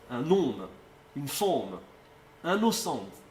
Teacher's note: Toutes les voyelles restent nasalisées. · les voyelles sont nasalisées et les consonnes qui suivent sont articulées.